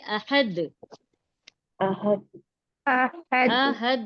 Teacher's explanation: تو ہا یہ جو حرف ہے ہا، اس کا مخرج ہے حلق کے درمیانی حصے سے یعنی بیچ کے حصے سے بڑی ہا ادا ہوتی ہے